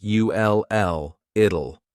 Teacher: when we say the contraction it will we kind of add a little u sound before the L it kind of sounds like UL l l it so here